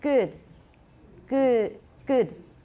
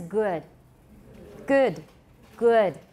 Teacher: And my teacher would just laugh at me and tell me it was American because I was putting a schwa after all my short vowels.